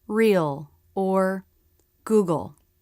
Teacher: to make this sound you don't lift your tongue tip instead it's down touching the back of the bottom front teeth the back part of the tongue pulls back towards the throat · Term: dark l